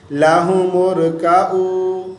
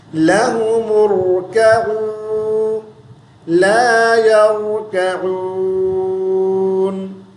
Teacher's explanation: را کو باریک آواز سے پڑھتے ہیں اور را پر قلقلہ بھی کر دیتے ہیں اور عین کو حمزہ پڑھتے ہیں